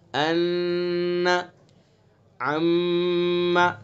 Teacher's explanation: نون کے اوپر تشدید ہے تو نون مشدد ہوگا، تو اس کے اندر ایک الف کے برابر ناک میں آواز لے جائیں گے، ان، عم. میم مشدد ہے لہذا میم کے اندر بھی غنہ کریں گے، یعنی ایک الف کے برابر ناک میں آواز لے جائیں گے، عم. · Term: حرف غنہ